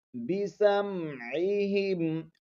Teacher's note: عین کو ہلکے درمیانی حصے سے ادا کریں گے